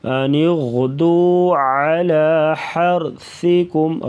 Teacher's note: را ساکنوں سے پہلے زبر تو را کو پر پڑھیں گے، ہا گلے سے ادا کریں گے.